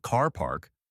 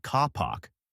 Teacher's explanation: >> That's a feature called non-reticity. It's a hallmark of many standard British accents where the R is only pronounced if a vowel sound comes after it.